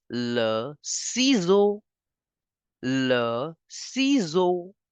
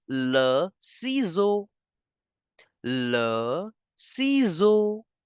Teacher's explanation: the S is between two vowels so we have to change the sound of s to zed